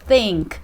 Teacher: pronunciada com a língua entre os dentes e assoprando para fora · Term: som do TH